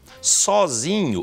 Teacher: Perde o acento porque a sílaba tônica passa a ser o zi.